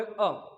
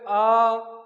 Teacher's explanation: जैसे आ बोल लिया, आपको अ बोलना है, छोटा सा एक मात्रा बोले अ, दीर्घ इससे बड़ा बोलना, बोले आ